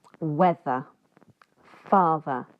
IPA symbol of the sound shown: ð